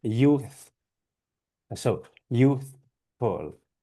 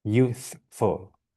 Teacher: The F is a bit lacking in sort of strength, I would say.